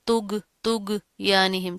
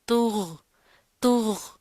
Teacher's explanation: غین کی آواز جو ہے وہ جاری رہے گی، موٹا کر کے پروپر منہ بھر کر پڑھیں گے اس کو